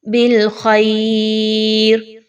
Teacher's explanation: خا کے مخرج کو اچھے سے واضح کیجئے اور موٹا کر کے پڑھیے